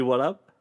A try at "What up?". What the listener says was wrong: You didn't have the right inflection. Wrong emphasis.